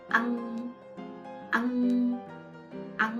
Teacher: But when A with the smiley face combined with NG, then you have to say the A short, because it's a short vowel, and then the NG longer.